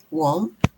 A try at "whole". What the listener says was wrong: Hole. So here we don't pronounce the W. We pronounce it the same as whole. The whole